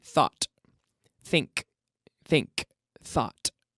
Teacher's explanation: It's that sort of TH, okay? Blowing air out with your tongue pinched between your teeth.